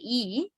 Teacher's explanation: your tongue is very close to the heart palate right it's it lies in a high position inside the mouth so it is a high vowel